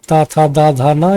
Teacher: ता वर्ग जैसा कि हमने बताया इनका उच्चारण स्थान दंत्य होता है। था किस वर्ग का है, तो ये दंत्य है। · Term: दंत्य व्यंजन